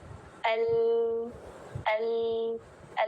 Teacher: हवा का साइडों से निकल जाना इनराफ कहलाता है